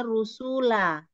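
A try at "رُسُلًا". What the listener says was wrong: sunnya panjang? Kenapa jadi su yang panjang rusula? Panjang atau pendek lanya? Iya, sunya pendek rusula.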